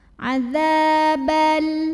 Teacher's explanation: Karena ada alif yang didahului baris fathah. Maka cara bacanya zalnya dipanjangkan 2 harokat saja. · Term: mad tabi'i